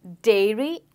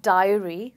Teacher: dairy has the eh sound and Diary has the I sound